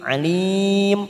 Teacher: Alim mat arid disukun 4 harakat kita panjangkan.